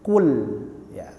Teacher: kemudian kita tarik untuk menipiskan huruf lamnya